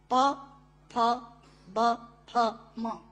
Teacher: दोनों होंठ मिलाकर बोले जा सकते हैं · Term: ओष्ठांग